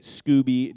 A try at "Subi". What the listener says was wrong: drop the C. You keep pronouncing it Scooby. It's Subi.